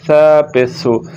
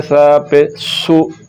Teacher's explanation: تو سا کو پڑھتے ہوئے سیٹی کی آواز نہیں نکلے گی